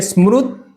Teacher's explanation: એટલે શું થશે કે સ્મૃત આમ કરીને આવશે, સ્મૃત, પછી આપણી જીભ અહીંયા તો છે ક્યાંથી નીકળે? તો આપણા દાંતમાંથી નીકળે, દાંતને જીભ અડે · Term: તકાર